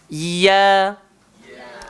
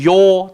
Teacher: Huruf ya keluar dekat mana? Tengah-tengah lidah. Langgar langit atas. Ya. So jangan gemukkan dia.